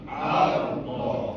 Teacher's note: ra tafkhim, tebal, kerana ra bertanda sukun, sebelumnya berbaris atas fathah, maka tebal.